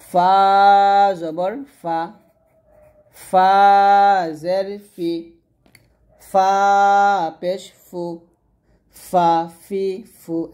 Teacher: উপরের দুই দাঁত নিচের ঠোঁটের পেটের সাথে লাগিয়ে ফা টা উচ্চারণ করতে হবে কারণ ফা টা হচ্ছে পাতলা করে উচ্চারণ করতে হবে যখন আপনি